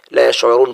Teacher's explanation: ولیکن لا یشعرون، یشعرون یہاں بھی واو مدہ ہے، یعنی یہاں واو ساکن ہے اور اس کے پیچھے را ہے، را کے اوپر پیش ہے، تو اس کو ہم ایک الف کی بقدر کھینچیں گے